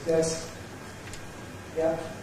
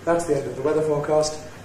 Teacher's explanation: It doesn’t go up, doesn’t go down, it stays level. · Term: Mid-Level tone